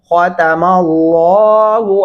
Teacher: لام کو موٹا پڑھیں گے اور خا کو بھی موٹا پڑھیں گے ، ختم اللہ علی قلوبہم وعلی سمعہم،